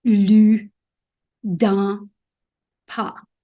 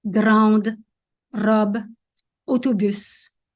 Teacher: Une syllabe ouverte se termine avec un son vocalique, comme lu, dans, pas. Alors qu'une syllabe fermée se termine avec un son consonantique comme grande, robe, autobus.